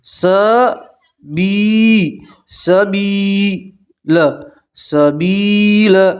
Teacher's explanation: यहाँ मद्दा किसे कहते हैं कि या के ऊपर जज्म हो और उससे पहले वाले हर्फ के नीचे ज़ेर हो तो उसे आप यहाँ मद्दा कहते हैं। ठीक है, यहाँ मद्दा में आप एक अलिफ के बराबर खींच कर पढ़ेंगे।